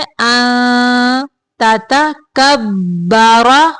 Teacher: काफ को बारीक पढ़ेंगे, बा मुशद्दद है इसलिए काफ को बा के साथ थोड़ी देर मिलाएंगे और रा को मोटा पढ़ेंगे।